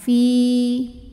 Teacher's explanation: Karena huruf ini adalah huruf ya sukun, huruf mad. Ya sukun didahului kasroh panjang 2 harokat. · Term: mad tabi'i